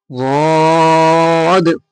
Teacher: জিভের কিনারা এবং তার বরাবর ওপরের মাড়ির দাঁতের গোড়ার সাথে লাগিয়ে উচ্চারিত হয় ضاد